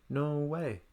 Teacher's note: going up on No then down on the way